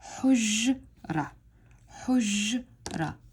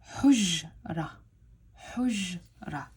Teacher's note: we don't pronounce the ta marbuta or the circled ta